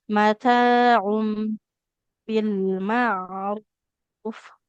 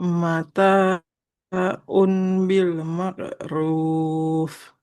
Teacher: Kalau kita ketemu mim kecil seperti ini, maka nggak mataun, mataum, berubah jadi mim bunyinya